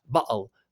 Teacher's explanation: sometimes they don't pronounce the t sound in the middle. So that would be like bottle. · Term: glottalization